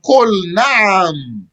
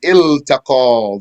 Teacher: So you see, there's a lam in front of the noon, but we're not merging the lam into the noon. Mhm. Though noon is itself a harf shamsi. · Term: lam of the verb